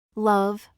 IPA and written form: lʌv (Love)